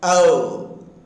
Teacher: So the tongue changes from lax to tense position. Ow. The tongue changes from ow, from lax to tense position.